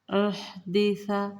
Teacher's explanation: ہا کو باریکی کے ساتھ ٹھنڈا، سا بھی نرم پڑھا جائے گا، سا نہیں کریں گے، سا نرمی کے ساتھ۔